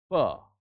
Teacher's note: I have to separate the lips to release the air. Then only the sound P will be uttered here.